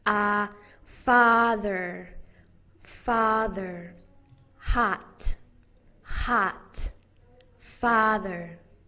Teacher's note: The ah vowel is said with the mouth open, ah, and it's the most open that we make our mouth when we're saying any of the vowels in American English. Ah. It's kind of like when the doctor asks you to open your mouth and say, ah.